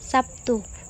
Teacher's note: terlihat bunyi B berubah menjadi Bunyi P sebagai akibat dari pengaruh bunyi t Perubahan tersebut merupakan jenis asimilasi fonemis Namun demikian asimilasi fonemis hanya